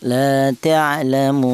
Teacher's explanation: yaitu panjangnya cukup satu alif seperti mad thabi'i yaitu satu alif atau dua harakat atau dua ketukan · Ya, kalau sudah menjadi mad adilus sukun ini, ini boleh ada tiga wajah bacaan yaitu yang pertama boleh dibaca tul yaitu panjangnya tiga alif atau enam harakat atau enam ketukan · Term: qasar